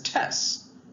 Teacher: this voiceless stop T sound can be dropped after voiceless S